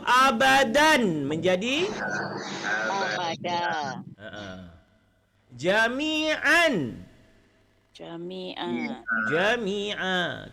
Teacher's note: Fathatani bila kita jadikan mad iwad ketika dia berhenti menjadi satu baris tapi kadar panjang 2 harakat.